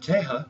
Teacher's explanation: remember the double R is an H